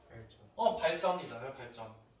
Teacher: 유음인데 뒤에 된소리가 되고 있어요.